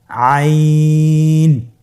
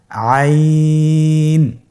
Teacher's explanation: আইন হরফটি কণ্ঠনালীর মধ্যখান থেকে উচ্চারিত হয়। · আইন হরফটি উচ্চারণের সময় অবশ্যই 3 আলিফ টেনে পড়তে হবে এবং আইন হরফটি বারিক হরফ, পাতলা করে পড়তে হবে।